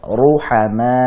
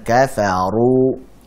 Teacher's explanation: tebalkan uru dengan cara pangkal lidahnya juga diangkat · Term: ra dhammah